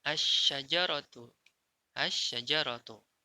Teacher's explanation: dibaca idgham idgham yang artinya memasukkan toh nah memasukkan maka dimasukkan jadi lam sukunnya tidak terbaca